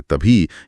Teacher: जब ब की ध्वनि में ह की हवा एक साथ मिल जाती है तो एक नई महाप्राण ध्वनि यानी भ जन्म लेती है।